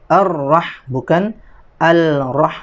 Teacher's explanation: Maka dia langsung masuk idgham, masuk ke huruf berikutnya. Dalam hal ini adalah ra, ar-rah, bukan al-rah, ya, tidak perlu dibaca lamnya. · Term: idgham syamsiyah